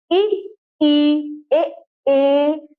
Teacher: मुख के आगे भाग से बोल रहे हैं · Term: अग्र स्वर